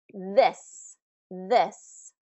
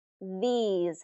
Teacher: this this has that short I this versus these these has the long e e e these